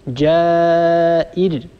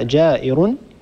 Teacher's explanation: لو وصلنا هذه الراء بما بعدها ومنها جائر، طبعا التنوين هنا التنوين رفع، الراء مضمومة تكون الراء مفخمة، لكن إذا وقفنا ستسكن الراء قبلها كسرة والراء الساكنة التي قبلها كسرة هي راء مرققة